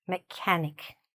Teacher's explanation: The ch doesn't sound like ch at all. It sounds, again, more like a k